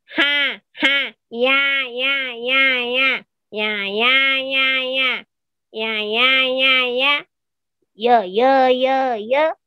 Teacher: kayak di kalau bahasanya mungkin kayak agak dicekik gitu ya penyakitnya pakai otot-otot yang ada di pita suara jadi kayak agak sedikit dicekik ditekan gitu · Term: penekanan pita suara